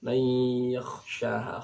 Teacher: disertai dengung. Nah, bunyi dengungnya itu di khayshum · kha ini tempat keluarnya di tenggorokan atas sama dengan ghain. Jadi mayya dibaca seukuran satu alif.